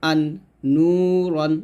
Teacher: জিহ্বার আগা তার বরাবর উপরের তালুর সঙ্গে লাগিয়ে নাকের পাশে হতে নুন উচ্চারণ করতে হয়